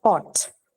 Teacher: Both your upper and your lower lip are involved in the articulation of it. Hence, you call it labial or bilabial sound.